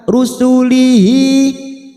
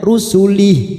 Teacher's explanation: Karena sekarang kita wasol, maka hadomir yang berharokat kasro berdiri, alif kecil ini kita panjangkan 2 harokat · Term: mad sila khosiroh